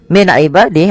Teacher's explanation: ada nun sukun bertemu dengan ain yaitu dibaca dengan jelas suara nunnya karena dia ada bacaan izhar halqi.